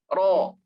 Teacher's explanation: ro fathah berarti tebal. Ro-nya itu harus tebal. Ro. Dan jangan maju.